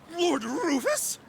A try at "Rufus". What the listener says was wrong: He didn't roll the R on Rufus?